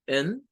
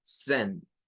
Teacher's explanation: En una lo hacen la segunda sílaba con el schwa, en, y en la otra la hacen con un sonido de E, sen.